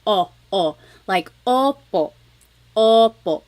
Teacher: I think of it like having a ball in your mouth your tongue gets kind of pushed back and down a little bit and the inside of your mouth is open and wide